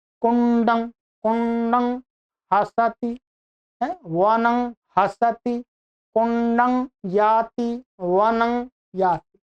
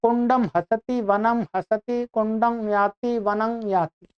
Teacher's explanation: जो अनुस्वार है इसका उच्चारण तो नासिका से ही होना चाहिए।